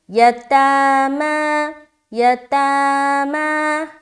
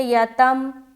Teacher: یا کو جلدی کرنا ہے، لیکن تا اور میم کو بالکل کھینچیں گے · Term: کھڑا زبر